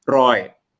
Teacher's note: So the real pronunciation is roy, the throat closed